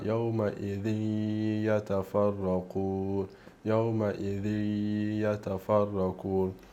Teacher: Qua col tanwin abbiamo yawma idhi yatafarraqun, yawma idhi, quindi non è un yawma idhin, non è yawma idhin, ma yawma idhi yatafarraqun, yawma idhi yatafarraqun. Sentite il ya proprio che è unito assieme, idhi, idhi, idhi, idhi, idhi, quindi c'è la ya che proprio è assieme all'idgham, idhi yatafarraqun.